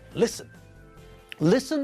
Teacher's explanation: it has two syllables and the stress is not at the end of the word